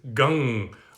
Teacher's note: uh it's written gum g-a-m with a dot uh transliterated but the actual sanskrit is gang which is more of that nasally sound